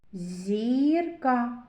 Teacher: Перший звук зь. М'який приголосний. Зірка і голосний.